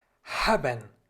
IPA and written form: ˈhaːbən (Haben)